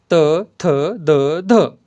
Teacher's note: करताना जिभेचा टोक उच्चार करताना जिभेचा टोक वरच्या दाताच्या मागील भागाला वरच्या दाताच्या मागील भागाला स्पर्श करते म्हणून त्यांना दंत्यवर्ण असे म्हणतात